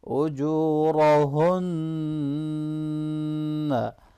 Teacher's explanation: रा के ऊपर ज़बर है, इसको मोटा पढ़ेंगे, नून मुशद्दद पे गुन्ना होगा, हा को हैवी पढ़ेंगे।